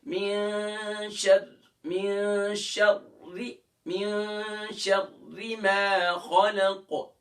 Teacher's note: را کے نیچے جب اپنی حرکت زیر ہے تو اس صورت میں اس کو ہم پھر لائٹ کر لیں گے. دیکھ پہلے موٹی ہوگی کیونکہ شین کے را سے پہلے شین ہے، شین کے اوپر زبر ہے تو شر، پھر اس کے بعد را کے نیچے زیر ہے.